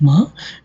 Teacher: when we are describing about ma, it is voiced, it is nasal